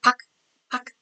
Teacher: 쌍 기역을 발음할 수가 없습니다 그래서 우리는 박이라고 발음을 하게 되죠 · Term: 음절의 끝소리 규칙